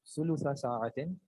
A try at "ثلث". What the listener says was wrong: یہاں پہ ساکن ہے شیخ. یہاں لام ساکن ہے.